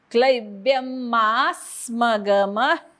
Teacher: ब्यच्या अनुस्वाराचा हलंत म, कारण पुढे म आहे. मा स्मगम, मावरती आघात.